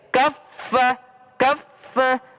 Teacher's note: Fa ada tasdidnya, fa-nya ada tasdidnya. Jadi ka ke fa itu nempel.